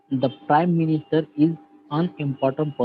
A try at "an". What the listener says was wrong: Un नहीं है वो. Un pronunciation नहीं. It's an.